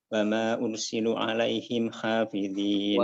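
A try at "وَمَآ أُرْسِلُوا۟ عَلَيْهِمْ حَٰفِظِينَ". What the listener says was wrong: وما أرسلوا lu panjang. Untuk mad jaiz dan mad mad muttasil ya, mad muttasil atau mad wajib dengan mad munfasil atau mad jaiz itu mohon diperhatikan lagi ya.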